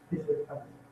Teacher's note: And the GK, it's almost like it's a very mild guttural. It's almost like a breathing.